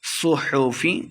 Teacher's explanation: صاد کو موٹا پڑھنا ہے، لمحہ بالکل نہیں کریں گے ، صحفی با حروف قلقلہ سے ہے، ساکن ہے، خوب واضح